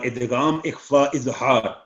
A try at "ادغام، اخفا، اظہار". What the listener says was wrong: تین سانس میں علیحدہ علیحدہ کر کے پڑھیں. یہ تو ایسے تک ہے کہ ایک ہی آپ نے کر دیا ادغام اخفا اظہار، یہ ایسے نہیں بول دیں گے. ادغام نمبر 2 اخفا،